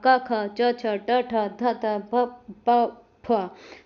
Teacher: अब आते हैं नॉन वेबरिंग या अघोष में इनमें स्वर तंत्रियों में कोई कंपन या गूंज नहीं होगा। सभी वर्णों के पहले जो पहला और दूसरा जो वर्ण होगा क, ख, च, छ, ट, ठ, थ, थ, प, प, फ।